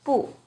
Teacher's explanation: When 不 is used alone, it's always the 4th tone